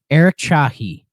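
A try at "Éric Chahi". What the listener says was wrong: I'm sure the Eric is pronounced differently because of it's got the little accent. Eric, maybe.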